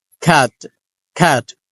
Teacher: খ্যাট শব্দটাতে আমরা কিন্তু প্রথমটাকে অ্যাসপারেটেড করছি খ, খ্যা, কিন্তু শেষে টটাকে অ্যাসপারেটেড করছি না